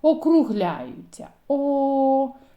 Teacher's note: А що відбувається з губами коли ми вимовляємо звук о губи витягуються в трубочку округляються